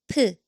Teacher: 피읕 makes a strong, airy P sound